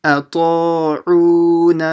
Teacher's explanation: the ta will be stretched, the ain will be stretched, and the na will be stretched. So 3 things here.